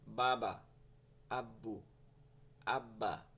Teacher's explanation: বা এর সময় কোন দাঁত টাত লাগবে না ঠিক আছে শুধু এই দুই ঠোঁটের এই যে ভিজা জায়গাটা